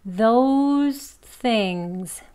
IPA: ðoʊz θɪŋz